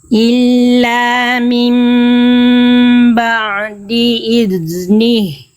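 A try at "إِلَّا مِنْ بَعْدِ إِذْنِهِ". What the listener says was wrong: Nah, itu kerasa nggak Bunda? Ngalir tapi agak mampet-mampet. Izni. Nah, oke, itu nggak boleh. Bukan nggak boleh, kurang maksimal. Ya, jadi huruf dal itu kita lihat dulu sifat-sifatnya. Nih, kita lihat sifat, nih ya, karakter dari huruf dal dari segi suara. Poin 2 namanya rokhwah.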